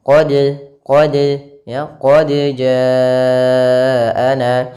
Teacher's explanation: dia malah mengidgamkannya ke huruf Jim harusnya dipantulkan qodja nah kemudian untuk memantulkan sendiri jangan sampai ada tambahan Hamzah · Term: qalqalah, Qalqalah